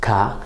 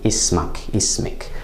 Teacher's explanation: in MSA, the vowel as in 'your name,' for example, to a man, اسمكَ, comes after the sound, the consonant of the 'kaaf,'